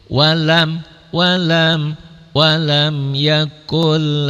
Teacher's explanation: idgham bila guna jadi melebur tapi tidak ditahan dan tidak ada dengungnya